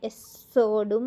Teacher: దాన్ని దీర్ఘాన్ని రావాలి కచ్చితంగా ఎస్సోడ్ లో ద కి మహాప్రాణం అండర్లైన్ చేసుకోవాలి స కింద స వత్తు ఉంది కాబట్టి అక్కడ కొద్దిసేపు నాలుకను నిలబెట్టాలి